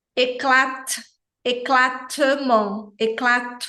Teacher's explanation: fica ali no meio termo sabe ele é um t suave eu produzo o t assim como o d no francês com a ponta da língua logo atrás dos dentes aqui da frente · o t na posição final é uma consoante muda em relação ao som do T ele nem é aquele T